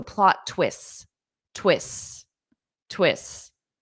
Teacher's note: native speakers including myself we generally just drop the t because it's a difficult sound to pronounce